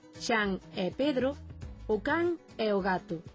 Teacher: na maior parte de Galicia, continúase a pronunciar con E aberto en todos os casos